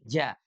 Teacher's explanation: Huruf jimnya itu tengah lidah. Tengah lidah yang diangkat ke langit-langit